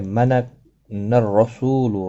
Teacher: را زبر کی وجہ سے پر پڑھا جائے گا۔ سو واو مدہ ہے، ایک الف کی مقدار کے برابر کھینچ کر پڑھا جائے گا۔